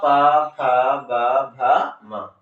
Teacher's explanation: छोटी उ, बड़ी उ और पवर्ग का उच्चारण ओठ से होता है, इसलिए क्या कहते हैं, ओष्ठ वर्ण कहलाता है।